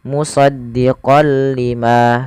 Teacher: Jadi kita hanya memasukkan saja tanwinnya kepada huruf lam dan tidak ditahan. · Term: idgham bila gunnah